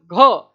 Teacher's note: घ कंठ से निकल रहा है, तो यहाँ पर उच्चारण स्थान इसका हो जाएगा कंठ।